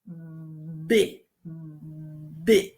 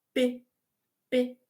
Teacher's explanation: Você percebe que existe um movimento aí na sua garganta que é diferente de quando você fala P, P. Parece que o P ele é mais suave.